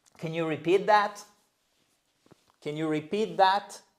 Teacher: vous remontez parce que c'est une yes no question.